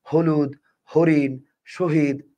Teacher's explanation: হ বর্ণটার উচ্চারণ হচ্ছে ঘোষ মহাপ্রাণ